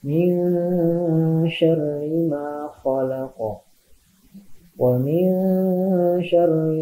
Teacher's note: Nah, min syarri ma, nun mati menghadapi huruf sya ya. Jadi dibacanya berdengung, ditahan 2 harokat.